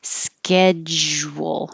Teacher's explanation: You have to make a j and then your lips have to get small for the W sound, but the j kind of gets fuzzy as you round your lips for the W.